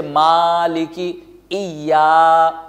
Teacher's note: تو زبر کے بعد اگر الف ہو تو اس الف کو الف مدہ کہا جاتا ہے، اور اس زبر کو بھی کھینچیں گے، زبر کو نہیں کھینچ رہے، اس الف کو کھینچ رہے ہیں جس کو الف مدہ کہا جاتا ہے